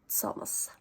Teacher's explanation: the Liverpudlian t is in fact a t and an s, t and s, pronounced more or less simultaneously, kind of with the t at the start, but t, and that is its own separate sound in some languages, but in terms of Liverpudlian English, it's just what happens to the letter T in certain word positions.